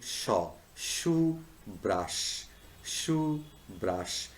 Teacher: the word shoe brush begins and ends with the voiceless palatal sound